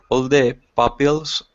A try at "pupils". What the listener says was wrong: Now wait, it's not pills. It's pools. Pupils.